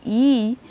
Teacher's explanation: you see that the tongue moves up close and that narrowness is happening in the front part so it's not just the tongue moves up but the narrowness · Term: high front vowel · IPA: /i/